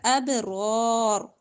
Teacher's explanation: موٹا، خیر لل باریک حرف، لل اب با پر کلکلا، ابرار، را اور را دونوں موٹے پڑ جائیں گے